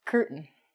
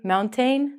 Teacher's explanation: we're gonna take out the t and the a and it's gonna sound like mount in